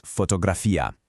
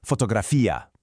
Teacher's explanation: the key here is the stress on that I at the end. It's not fotografí-a, it's fotografía.